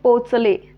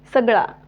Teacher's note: त्यामध्ये जे अ हा स्वर आहे तो अपूर्ण उच्चारला जातोय, तोकडा उच्चारला जातोय, दीर्घ नाही उच्चारला जात.